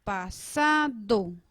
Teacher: Sílaba tónica, la sa. Y la sílaba átonas son pa y do.